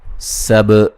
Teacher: سین کو باریک سیٹی سے با پہ قلقلہ.